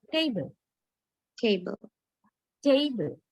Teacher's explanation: But actually, according to the British Standard English pronunciation, this is pronounced with a diphthong, with a glide